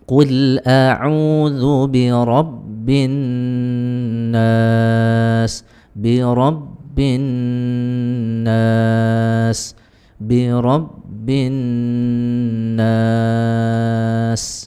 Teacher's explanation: Ketika bertemu nun tasydid, maka baca dengung dengan cara menahannya dua ketukan lalu lepas di ketukan yang ketiga.